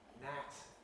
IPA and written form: næt (gnat)